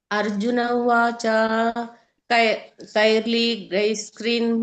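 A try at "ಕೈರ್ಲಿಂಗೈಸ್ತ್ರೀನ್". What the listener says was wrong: ಅಲ್ಲಿ ಒಂದು ಅಲ್ಲಿ ಸೊನ್ನೆ ಬರಲಿಲ್ಲ ಕೈರ್ಲಿಂಗೆ ಆಗಬೇಕುಅದು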